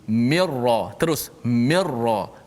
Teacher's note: Jangan minra, jangan ada unsur-unsur nun lagi. Kerana nun masuk secara total masuk dalam ra. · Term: idgham bila gunnah